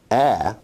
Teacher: ah is a low front unrounded vowel